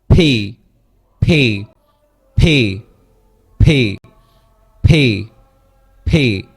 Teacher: এটা হচ্ছে অ্যাসপিরেটিভ সাউন্ড। এখানে হচ্ছে মুখের ভিতর থেকে একটা বাতাস বের হবে